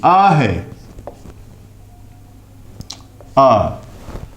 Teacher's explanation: आ का उच्चारण स्थान जो है वह कंठ है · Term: कंठीय